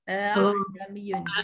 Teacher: Panjangkan sikit saja dalam dua. Dia macam sebut tak sebut lah hamzah tu. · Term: bacaan tashil